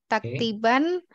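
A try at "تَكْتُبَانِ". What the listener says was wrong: Taktuban. Nah, jangan diubah huruf sebelum akhirnya. Taktuban. Tetap yang diubah cuma huruf mudharaahnya saja, Mbak. Taktuban.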